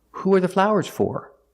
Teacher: Because for is at the end of the sentence, it is stressed, and it's pronounced for, like more and floor, or for. Who are the flowers for?